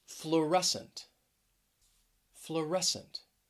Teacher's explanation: fluorescent stress is on that second syllable